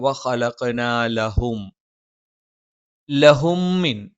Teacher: ലെ എന്ന് ഉച്ചരിച്ചു പോകാനുള്ള ഒരു സാധ്യതയുണ്ട് അതൊരിക്കലും ഉച്ചരിക്കാൻ പാടില്ല ലഹും എന്ന് തന്നെ ഉച്ചരിക്കുക